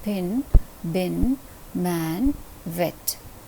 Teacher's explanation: all these consonants sounds are known as bilabial sounds because they're articulated with the help of both our lips with the help of the upper lip and the lower lip